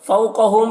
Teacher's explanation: یہاں پر واو لین ہے، واو لین کو بھی نرم آواز کے ساتھ جلد پڑھنا ہے۔